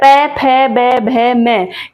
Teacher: ओष्ठ्य मतलब होठ, जो हमारे दोनों होठ होते हैं, ये जो पूरा वर्ग है ये उन्हीं से बोला जाता है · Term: ओष्ठय वर्ण, ओष्ठ्य वर्ण